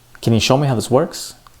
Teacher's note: So the stressed words would be show and works.